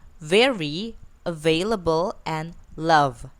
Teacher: V, which is voiced, labiodental, fricative, and the initial, medial, final like very, available, and love.